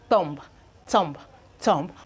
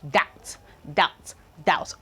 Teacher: So when we are pronouncing any of this word, the B is usually silent.